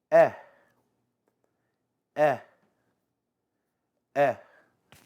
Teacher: e indicates a long vowel that sounds very similar to the vowel of the English words bet and vet